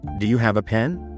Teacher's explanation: clearly enunciating each word with a soft uh for a